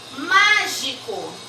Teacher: circula a sílaba tônica, que é o má